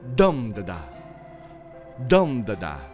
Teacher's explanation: be dum da-da when we talk about ductilic so ductilic the the stress is on the first syllable